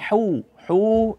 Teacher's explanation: itu huruf ha dari tengah tenggorokan ya dia bukan huruf ha kalau huruf ha itu dari pangkal tenggorokan